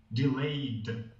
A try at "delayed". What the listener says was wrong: And it's just getting that hard D at the end there.